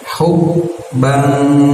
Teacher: disamarkan suaranya dan ditahan sekitar 2 harokat. Ketika disamarkan dan ditahan itu siap-siap lidah kita di posisi makhraj huruf jim ya, seperti itu rumusnya. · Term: ikhfa